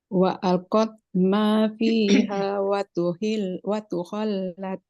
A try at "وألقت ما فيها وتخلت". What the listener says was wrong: Lamnya biarkan dia tersebut dulu, jangan cepat-cepat ke huruf qaf.